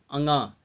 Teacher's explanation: जिसका उच्चारण नाक के साथ हो, यानी नाक से भी होता है, मुख के साथ साथ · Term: अनुनासिक